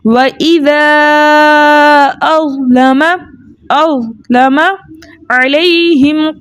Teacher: یا ساکن اس سے پہلے کسی بھی حرف کے اوپر زبر ہو ایسی یا لین کہلاتی ہے. یا لین کو 1.5 حرکت کی دیر لگا کر نرمی اور سہولت سے پڑھتے ہیں